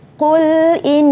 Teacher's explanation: nun ada tanda sabdu. Sabdu iaitu syaddah, dengung, ya, wajibul gunnah. Qul inna salati, lam alif itu tanda baris, tanda mat ataupun bacaannya dipanjangkan.